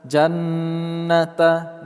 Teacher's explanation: jannata nun bertasydid kita gunnahkan atau kita dengungkan